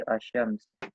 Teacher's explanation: syamsiyah itu lamnya tidak dibaca atau dengan mengucapkan huruf setelah lamnya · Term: alif lam syamsiyah